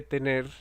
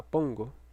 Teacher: En estos casos, tener, poner, componer, mantener, lo que ocurre cuando afijamos la primera persona singular en el presente del indicativo es que la consonante final tiene un proceso muy interesante en el que se fortalece y se le agrega un segmento oclusivo